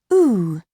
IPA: uː